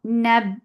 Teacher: Nab, for fatha panjas attached with ba. Ba will get sifa of shitta. The sound will cut off abruptly.